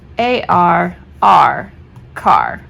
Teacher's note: Have them do AR, and it's kind of a broad A, R, but it's one blended sound